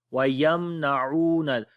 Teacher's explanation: میم ساکن کے بعد نون ہے تو اظہار شفوی ہوگا